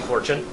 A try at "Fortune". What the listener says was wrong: Every time you say fortune at this point, I think you're saying 4chan. I think you need to emphasize your O's more.